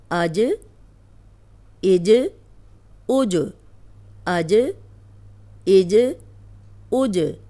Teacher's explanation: اب دیکھیں اس کو ہلا کے پڑھیں گے، ہم ایسے نہیں پڑھیں گے آج، اج، اوج، ایسے نہیں، روکنا نہیں ہے، اس کو ہلا کے پڑھنا ہے، یہ باؤنس ہوتی ہے آواز اس کی۔